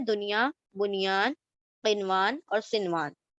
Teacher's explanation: آپ سمپل جس طرح سے نارمل پڑھتے ہیں ویسے آپ نارملی نون کی آواز کو ایکسپریس کر کے ظاہر کر کے پڑھیں گے. تو یہ یہاں پر اظہار مطلق کہلاتا ہے.